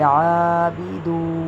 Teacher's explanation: واو ساکن سے پچھلے حرف پر پیش ہے تو یہ واو مدہ ہے تو اس کو کھینچیں گے